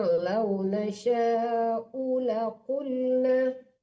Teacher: U-nya jangan tertahan, tidak panjang.